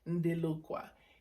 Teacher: no contrastan las obstruyentes sordas y sonoras, pero se sonorizan predeciblemente en este contexto después de una nasal. Entonces, este fonema es T, pero se pronuncia D.